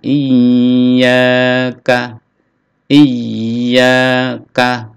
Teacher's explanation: ada tasdid ya, ditekan lalu dipanjangkan, ditahan. Iyyaka, iyyaka, kaf pendek.